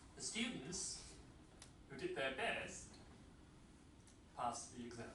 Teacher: Who did their best, rising intonation, passed the exam. Falling intonation.